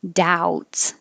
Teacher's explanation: we don't say the B at all. Just pretend it's not there.